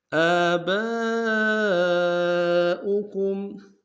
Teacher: آباؤکم، حمزہ کے اوپر کھڑا زبر ہے، ایک مقدار میں کھینچیں گے، با کے ساتھ الف مدہ کے اوپر مد ہے بڑا سا، کم سے کم 3 مقدار میں کھینچیں گے